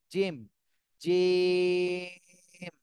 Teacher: জিহ্বার মাঝখানটা উপরের তালুর সঙ্গে লাগায় · জিম জিম তিন আলিফ টান দিতে হবে